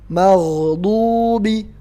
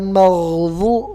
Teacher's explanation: tempat keluarnya di lidah bagian tengah yang pinggir. Bukan di ujung lidah. Jadi lidah nggak boleh keluar. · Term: do yang nggak ada tongkat